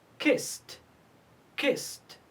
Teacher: We pronounce ed t because it's preceded by s.